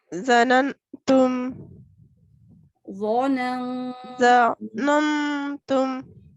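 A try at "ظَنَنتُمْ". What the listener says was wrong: और इसको भी नन की बजाय, मतलब नून को आप ये समझे कि है ही नहीं, बस नून गुन्ना है। ज़ननतुम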